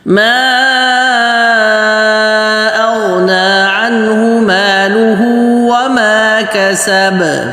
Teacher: کسب کا با اس پہ قلقلہ درمیانہ ہوگا